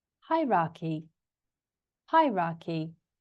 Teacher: So it goes up. The stress is on the first syllable.